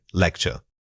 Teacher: When you say this, make sure your emphasis falls strongly on lect. Don't let that sound get muffled by the following syllables.